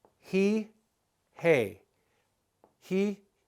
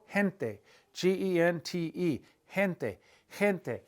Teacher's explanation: the G when it's followed by an i or an e is kind of pronounced like the H sound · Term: soft G